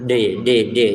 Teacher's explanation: huruf yang ketika mengucapannya ujung lidah yang kita tempelin ke gusi atas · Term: huruf D